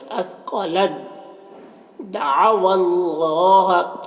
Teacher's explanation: جب دونوں ساکن اور مشدد حرف ساتھ میں ہوتا ہے تو ساکن والا حرف مشدد والے حرف کے ساتھ مدغم ہو جاتا ہے. تو یہاں پر تا دال کے ساتھ مدغم ہو جائے گا، تو پھر کیا ہے، تا کو نہیں پڑھیں گے، دال کو پڑھیں گے